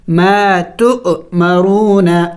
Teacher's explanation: ما تؤمرون، ما تو، چونکہ حمزے کے اوپر سکون ہے اور جب حمزے کے اوپر سکون ہو تو حمزے کو جھٹکا دے کے پڑھا جاتا ہے